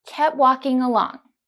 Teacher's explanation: you can omit the t sound in kept and say kept walking.